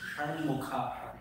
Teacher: Shanmukha, we have to roll the tongue.